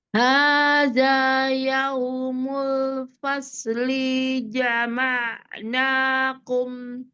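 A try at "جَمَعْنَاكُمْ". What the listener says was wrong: Nah, linya tuh pendek.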